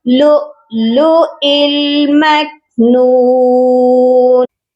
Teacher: دوسرے والے حمزہ کو لام ساکن کے ساتھ ملائیں گے